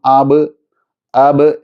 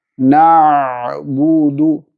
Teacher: മയപ്പെടുത്തി തവസ്സുത്ത് എന്ന സിഫത്ത് ചേർത്തുകൊണ്ട് വ്യക്തമായി നന്നാക്കി ഉച്ചരിക്കാൻ ശ്രദ്ധിക്കുക